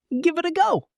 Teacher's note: The V connects to it, and the T connects to A.